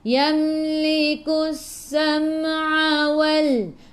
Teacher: Terus tekan ke dalam sin dan sifat huruf sin safir kena bunyikan berdesir